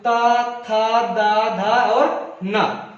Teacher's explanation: इसके उच्चारण की बात करें तो ये उच्चारण होता है जो बोलते हैं ता, आपके दांत से टक्कर करता है